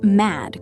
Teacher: use a sharp ah sound, like in the word cat, and make sure to end with a strong, clean D.